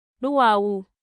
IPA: ɗuwawu